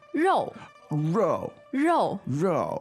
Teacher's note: we have a heavy sounding fourth tone word